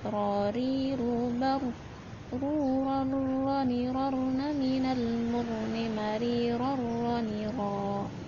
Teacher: Jadi dimasukkan dengan tidak dengung, dengan tanpa dengung ketika nun sukun bertemu dengan ra atau tanwin bertemu dengan huruf ra. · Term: idgham bila gunah